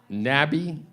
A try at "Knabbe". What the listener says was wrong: The K is not silent. K's not silent.